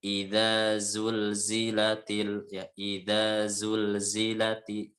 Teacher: yang za itu ujung lidah ketemu dengan ujungnya dua gigi sari atas. Bagian tajamnya yang ketika kita mengunyahnya itu.